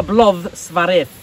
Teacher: it has that funny D at the end, which is actually a TH sound